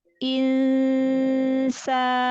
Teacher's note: Nun sukun ketemu sin, ikhfanya. Insa dari depan. · Kalau Anda mendengarnya masih ingsa, masih insa, lidah, pangkal lidah jangan nempel ke atas, jangan ingsa dari depan, dari makhraj huruf sin